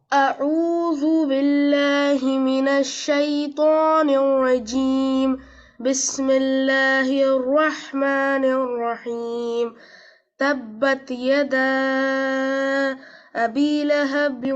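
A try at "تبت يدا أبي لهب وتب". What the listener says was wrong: No break. There should not be break after the mud. Okay, there should not be the break after mud. If you want break, you can reduce the stretch of yada.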